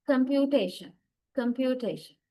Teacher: in these 4 syllables, we stress the third one, T. It carries the strongest stress. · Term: primary stress